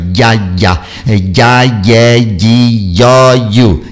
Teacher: E no caso do Y, aí sim as laterais encostam bem a lateral no céu da boca.